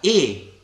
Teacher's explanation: gli si dava il suono della e chiusa di quantità lunga quindi diciamo un suono e un po' prolungato In realtà noi